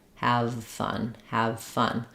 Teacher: as I'm saying my V just turn my voice off and it'll turn to an f